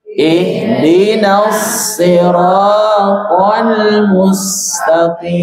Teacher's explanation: Ra dibaca panjang 2 harokat, kim dibaca panjang. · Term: vokal panjang